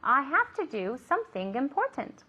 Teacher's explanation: remember to pronounce that NG sound, that nasal ng